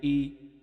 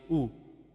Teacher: حمزہ جھٹکا دے کر پڑھا جاتا ہے اور حلق سے نکالا جاتا ہے